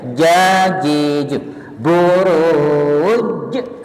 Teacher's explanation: Buruj jimnya itu nggak ada mesnya, bersih di tengah lidah ya.